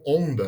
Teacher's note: Que é o on nasalizado, o O nasalizado, né? Então é onda, né?